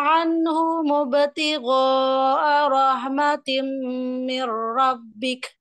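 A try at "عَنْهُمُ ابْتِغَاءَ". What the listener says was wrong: Anhum ibtigha'a. Kurang panjang ya,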